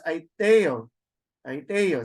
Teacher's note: So you could hear the accent in the epsilon.